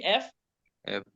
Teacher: আপনার দাঁতগুলো অটোমেটিক ঠোঁটের সাথে লাগতেছে, উপরের ঠোঁটটা লাগতেছে না, উপরের দাঁতগুলো লাগতেছে।